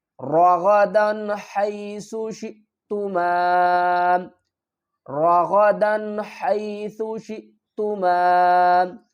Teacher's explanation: را کو بھی پر پڑھیں گے، غین کو بھی پر پڑھیں گے۔